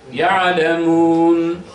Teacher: Tul ile okuduğumuzda dört elif. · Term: medde arız